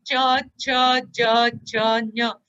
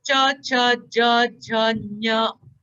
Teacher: Talabhyaha. Talabhyaha means now the tongue is going to be placed at the palate.